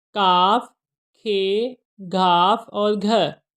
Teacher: زبان کا پچھلا حصہ نرم تالو کے قریب جا کر باہر آتی ہوا میں رکاوٹ ڈالے گا